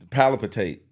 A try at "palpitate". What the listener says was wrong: it's palpitate, by the way. No, you said you putting an extra L on that bitch. It's not palpitate. It's palpitate. No, you saying palpitate. No, you saying palpitate. You're saying that.